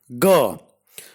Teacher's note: Ga is a voiced velar plosive.